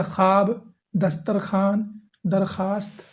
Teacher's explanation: ان سارے الفاظ میں واو لکھی تو جائے گی مگر پڑھی نہیں جائے گی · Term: واو معدولہ